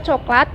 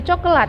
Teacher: deret konsonan hilang karena diselipi vokal Tengah sedang